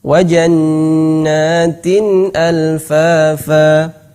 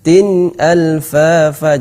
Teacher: jelas nunnya tanpa ada gunnah yang dipanjangkan.